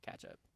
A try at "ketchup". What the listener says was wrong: you say it like K-A when it's like K-E.